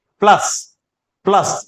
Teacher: ल के ऊपर रहेगा तब इसका शुद्ध उच्चारण होगा इसे कहेंगे प्लस प्लस यानी ल ल लंबा जाएगा और लंबा जाएगा तो इसका मतलब ल के ऊपर बला घात है